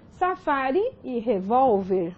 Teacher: Então, temos a penúltima sílaba tônica. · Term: Paroxítona